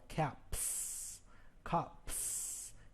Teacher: If you notice the final P, no voice comes out when you say the P.